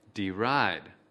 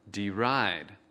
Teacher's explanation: Trọng âm của từ deride ở âm tiết thứ hai.